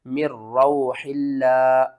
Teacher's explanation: یہاں پر لفظ اللہ سے پہلے زیر ہے تو ہم لفظ اللہ کو باریک پڑھیں گے